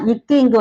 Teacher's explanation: நாவோடைய முதல் பகுதி, அன்னத்தின் அடிப்பகுதியை பொருந்துவதால் பிறக்கின்றது